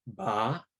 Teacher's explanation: You also get rising tones, like in the word for poison, ba, which is a low-high tone.